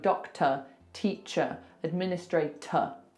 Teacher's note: on a word like doctor, teacher, these ER or OR ending words, that will be a schwa